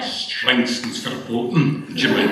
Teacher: notice the authentic Glaswegian glottal stop